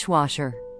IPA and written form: ˈdɪʃˌwɔːʃər (Dishwasher)